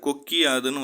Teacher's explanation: கொக்கு கூட்டல் யாது கொக்கிய யாதுன்னு வரும். கூ வந்து கீயா மாறுது. ஆனா மாறும் பொழுது அதனுடைய இகரம் ஒரு மாத்திரை அளவிலிருந்து அரை மாத்திரை அளவுக்கு ஒலிக்கும். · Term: குற்றியல் இகரம்